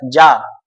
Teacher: हवा लग ही नहीं रही है तो जा आपका अल्प प्राण है